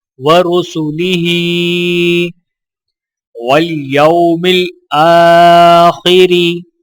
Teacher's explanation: الف کے اوپر کھڑا زبر ہے تو ایک الف کے برابر کھینچ کر پڑھا جائے گا